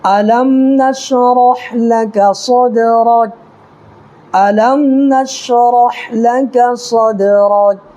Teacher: دال جو ہے دال میں ہم کو قلقلہ کرنا ہے ، اس لیے کہ حروف قلقلہ کے 5 حرفوں میں سے